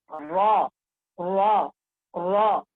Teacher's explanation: जुबान का किनारा और कुछ पुश्ते जुबान, या कहेंगे और कुछ जुबान का पुश्त, जबकि मिले सनाया उलिया और रुबाई के मसूड़ों से